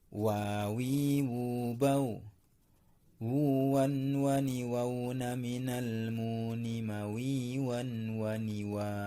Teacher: Di manakah letak makhraj huruf waw? Makhraj waw atau huruf waw atau huruf wa adalah kedua bibir atas dan bawah yang dirapatkan bersama.